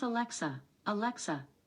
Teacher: can't just say alexa play noah weather i pronounce alexa alexa the stress is on the middle syllable